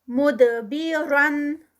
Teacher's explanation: दाल का कलकला, रॉ heavy. मुदबिरा, और उस पे एंड पे फिर रॉ हैवी और 2 काउंट्स स्ट्रेच.